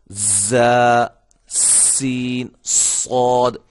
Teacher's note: یہ 3 حروف جو ہیں یہ جب ادا ہوتے ہیں تو سیٹی کی آواز پیدا ہوتی ہے